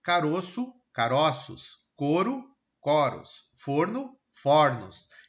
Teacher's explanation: Os cais, os X, ok? Plural com metafonia, mudança de som. No singular, ele é fechado, no plural, ele é aberto.